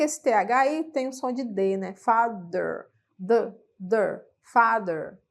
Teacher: esse th tem um som de D